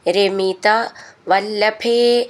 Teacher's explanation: ഭേ എന്നുള്ള അക്ഷരം നന്നായിട്ട് ഊന്നി പറയണം